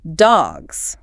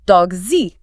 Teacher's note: It's a buzzing sound. It's a buzz, not a hiss. And that's because the G sound, before it is voiced, your vocal cords vibrate to make it.